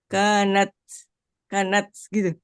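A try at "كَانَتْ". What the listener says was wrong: Masih terlalu C. ada udaranya. Ya, harus ada hamasnya. Jangan ke C ya. T. Tapi ada hembusan udaranya.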